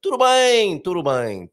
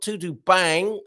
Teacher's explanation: It's a nasal sound on the bang.